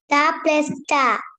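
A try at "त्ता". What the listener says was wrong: note ता प्लस ता ये त और ता क्या है पहला लेटर हाफ है त कहते हैं त वी कैन नॉट से इट इज ता बिकॉज ये चिन्ह आपने देखा हल चिन्ह लगाया है त और ता देन फोर्थ वन स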